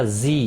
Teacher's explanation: زی یا مدہ ہے، ایک الف کے برابر کھینچ کر پڑھیں گے۔